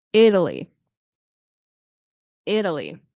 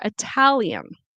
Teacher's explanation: Italy. In American English, we often have the flap T. This turns into a fast D.